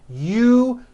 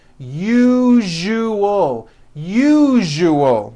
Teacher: That second syllable, ju, the one with the underline, needs to be voiced. Put your hand on your throat and feel for the vibration in the second syllable.